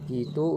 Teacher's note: I memiliki dua alofon yaitu I tinggi atas tak bundar depan dan I tinggi bawah tak bundar depan